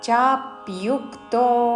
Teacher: చా మీద ప్యు లోని య మీద ఆఘాత